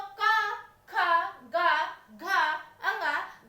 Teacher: ये हो जाते हैं उच्चारण स्थान की दृष्टि से कंठ है, क्योंकि इनका उच्चारण कंठ से होता है